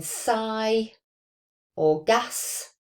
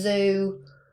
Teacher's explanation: So the voiceless alveolar fricative is s, as in sigh or gas. And then we have the voiced version, which is the voiced alveolar fricative of z, which is in zoo.